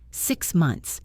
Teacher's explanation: For months, we often say months. We turn the th into a t sound because it is easier to go from n to t to s six months.